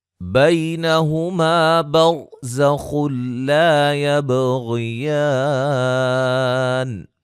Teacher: را کو موٹا، زا کو سیٹی سے، خا کو موٹا ادا کریں گے، اور یہ نون تنوین کا ادغام بلا غنہ ہے، الف مدہ ہے، با پہ قلقلہ، غین کو موٹا، الف مدہ.